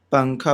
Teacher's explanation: نون کی آواز کو ناک میں چھپا کر پڑھنا چاہیے، نوک زبان سے ہٹا کر، جیسے اردو میں پنکھا کے نون کو پڑھتے ہیں۔ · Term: اخفاء